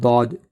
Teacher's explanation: داد کا مخرج ہے حافۂ لسان، یعنی زبان کی کروٹ اور اس کے مقابل اوپر کے داڑھوں کی جڑ